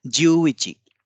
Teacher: ज्यू पे ज्यादा जोर होगा, इची पे कम जोर होगा, क्योंकि इसमें एक अतिरिक्त उ की मात्रा है।